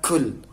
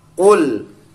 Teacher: Bedanya kaf sama qaf, kalau kaf ada angin keluar sedikit, qul. Kalau qaf tidak ada angin keluarnya.